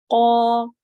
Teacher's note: زبان کی جڑ جب نرم کے تالو کے نرم حصے میں ٹچ ہوتی ہے تو قاف ادا ہوتا ہے